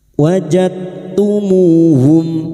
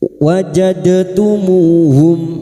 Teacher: Bertemunya dua huruf yang sejenis makhrajnya. Masuk pada huruf ta dengan menghilangkan sifat qalqalanya. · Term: idgham mutajanisahan